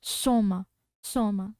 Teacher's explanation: Mas vocês viram que nitidamente foi emitido o M sem ter função nasal. · Você vê também que a gente consegue pronunciar a palavra sem emitir nenhum som nasal.